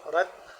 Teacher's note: را موٹا ہے، تا باریک ہے، تا کو یعنی کہ طوا سے جدا کر کے یہاں پہ پڑھیں گے۔